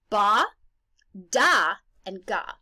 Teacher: the soft pallet that's at the back of the mouth so ba is at the front of the mouth da is in the middle and G is at the back